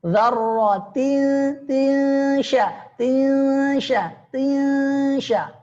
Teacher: Dengungnya tipis. Dzarratin sya. Tipis. Ya, kalau tebal salah.